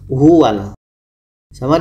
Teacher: izhar qamariah dan dibaca jelas dan tidak boleh dengung